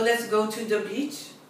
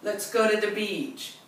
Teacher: the beach being longer in the second utterance is warmer invitation to an american ear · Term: vowel length